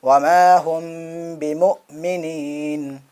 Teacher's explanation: میم ساکن کے بعد با آیا، بھی اخفاء شفوی ہوگا، آواز ناک کے اندر چھپے گی